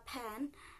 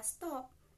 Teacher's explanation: apabila letaknya di awal dia seperti kata pen itu bunyinya agak sedikit diletupkan sedangkan kalau letaknya di akhir seperti pada kata stop itu dia tidak diletupkan